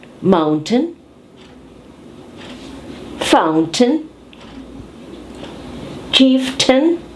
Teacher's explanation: Let's have the TN sound where we have the glottal stop. We have the syllable T-A-I-N, which we pronounce as ten.